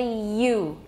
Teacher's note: It begins with the front of the tongue raised toward the hard palate. 所以舌前会靠近音额. That's a palatal sound. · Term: palatal consonant